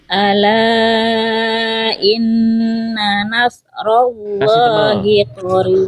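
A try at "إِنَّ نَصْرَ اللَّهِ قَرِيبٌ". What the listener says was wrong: Ro-nya kasih tebal lagi bunda. Yang ini kurang tebal. Yang ini kurang tebal.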